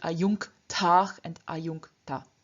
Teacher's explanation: in front of this velar k, the palatal n changes into the velar n. · Before the endings ta and ta, which both begin with a voiceless consonant, namely t and t respectively, the j at the end of the stem also loses its voice, therefore becoming ch. But because j and ch are palatals, and because palatals change into their velar counterparts before another consonant, we here get this ch furthermore changing into k. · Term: internal sandhi